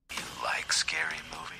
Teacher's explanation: did you notice that the word do is difficult to hear